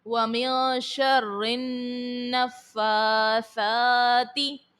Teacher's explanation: رو کے نیچے زیر ہے، رو کو باریک پڑھیں گے